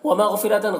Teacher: ومغفرۃ غین کو پر پڑھنا ہے، حروف مستعلیہ میں سے را کو پر پڑھنا ہے.